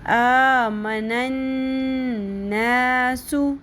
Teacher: نون کے اوپر تشدید ہے, غنہ کریں گے